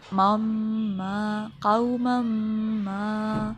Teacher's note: میم مشدد ہے، میم پر ہم نے جانا کہ غنہ ہوتا ہے